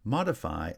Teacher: modify actually has primary stress on the first syllable and secondary stress on the third syllable